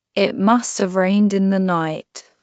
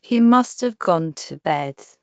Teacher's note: In natural speech, must have becomes must of, which sounds like must you v.